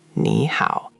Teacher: The first one lifts up, the second one dips.